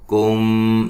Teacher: یہاں میم ساکن کا اخفا ہے